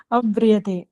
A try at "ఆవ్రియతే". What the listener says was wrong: ఆవ్రియతం, ఆ దీర్ఘం రాసుకోండి, ప్రింటింగ్ మిస్టేక్.